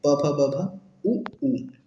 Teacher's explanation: ओष्ठ से प वर्ण, प फ ब भ और उ